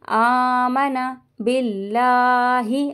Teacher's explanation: اللہ کے لام کو باریک کریں گے